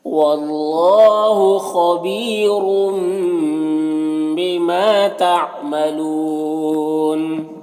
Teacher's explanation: واللہ، یہاں پر اللہ کلام سے پہلے واو کے اوپر زبر ہے تو اللہ کلام کو پر پڑھیں گے۔ خا حروف مستعلیہ میں سے پر پڑھیں گے۔ یہاں پر یا مدہ ایک الف کے برابر کھینچیں گے۔ · یہاں پر یا مدہ ایک الف کے برابر کھینچیں گے۔ را کے اوپر دو پیش کی تنوین ہے، را کو بھی پر پڑھیں گے۔ اور تنوین کے بعد با ہے تو تنوین کو اس میم سے بدل کر غنہ اور اخفا کے ساتھ میں پڑھیں گے، اس کو اقلاب کہتے ہیں۔